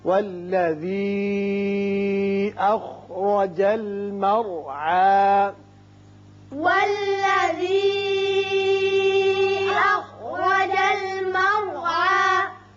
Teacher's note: یہ مد منفصل ہے، 3 الف کے برابر آپ نیچے کو آواز کھینچیں گے